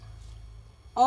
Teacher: कंठोष्ठ जो है ये औ का उच्चारण स्थान है दोस्तों